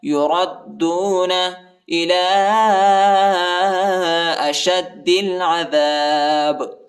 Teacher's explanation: لام کے اوپر کڑا زبر اور چھوٹا مد آیا ہے، اس کو تقریباً 2-3 سیکنڈ تک کھینچیں